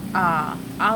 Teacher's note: विवृत मतलब खुला, खुला मतलब ओपन, आ बोल के देखो पूरा मुख विवर खुल जाता है।